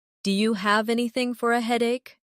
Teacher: Do you sounds like D ya.